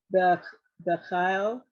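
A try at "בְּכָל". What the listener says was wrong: Bechol, actually. Even though it's you could say but they pronounce it more O.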